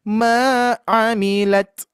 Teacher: mi-nya kepanjangan di sini enggak ada yang panjang, Bu ya. Jadi cukup ma-nya ya. Ma'amilat. Ma'amilat.